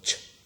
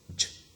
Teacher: we have got ch, which is voiceless, and j, which is voiced